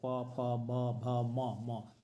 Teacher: म बोलते हैं तो ओष्ठ दोनों ओष्ठ सट जाता है